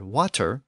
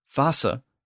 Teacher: the modern English word water with the T sound in the middle with the modern German word Wasser with the S sound in the middle